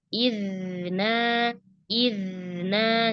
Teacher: Kalau huruf zal sukun, ya, dialirkan dulu suaranya, baru ke huruf berikutnya.